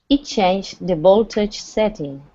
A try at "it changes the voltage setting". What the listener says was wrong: change would be without an s but there's an s at the end so that means that there's two syllables